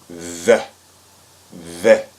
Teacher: And this is pronounced like in the English word that. And you want to note that the tongue will come out between the teeth